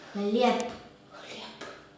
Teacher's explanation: Когда произносим хлеб, слышим «п», а пишем «б».